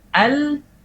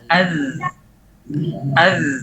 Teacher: Zal kan? Karena zal suaranya jalan, kemudian suaranya saja yang jalan, nafasnya tidak jalan karena dia jahar.